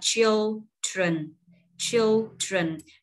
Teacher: Dấu nhấn âm rơi vào vần đầu tiên, cho nên mình sẽ lên giọng ở vần đầu tiên. Mình có phụ âm tờ sờ.